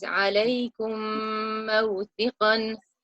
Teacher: And there is an underlying there where the rule of idgham will apply. When the Meem Sakinah is followed by a Meem Shadda, you merge and blend the sounds while nasalizing for 2 counts